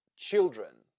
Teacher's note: like U Canon children children here we have two syllables and the first one is stressed therefore the second one has letter e that sounds like uh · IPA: ə